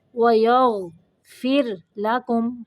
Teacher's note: غین کو قلقلہ نہیں کرنا، غین کو موٹا پڑھنا ہے اور را کو باریک